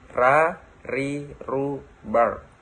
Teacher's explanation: Melafalkan huruf ro dengan menyentuhkan lidah ke depan atau dengan langit-langit bagian depan.